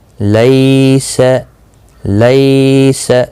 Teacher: دیکھیں یہاں پر لین ہے، یا ساکن سے پہلے زبر ہے، اس لیے نرمی کے ساتھ تھوڑا ایک آدھے الف کی مقدار کے برابر کھینچ کر پڑھیں گے